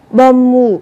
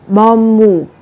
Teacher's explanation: Các bạn cũng đọc biến âm, âm bờ chuyển thành âm mờ, bởi vì theo sau nó là một phụ âm mờ